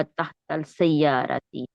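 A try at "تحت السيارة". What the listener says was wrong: تحت السیارتی. تحتل نہیں بولیں گی، تحتل نہیں بولیں گی، یہاں پہ نہیں ملا.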